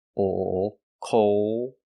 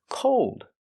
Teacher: Cool has the long oo sound, cool, with a dark L, and cold has the long O, like no, don't go. When we connect the long O to the dark L, coal, it changes the sound.